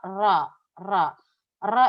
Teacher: pita suara itu buka tutup buka tutup secara berulang